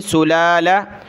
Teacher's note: सुलाला सीन पेश सु लाम खड़ा ज़बल्ला सुला लाम ज़बल्ला सुलाला पहली लाम को खींचना दूसरी को नहीं